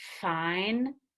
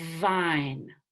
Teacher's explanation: the voiced counterpart is the V where I need to engage my vocal cords